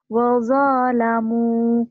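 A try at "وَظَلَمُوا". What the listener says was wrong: Kenapa panjang? Enak aja.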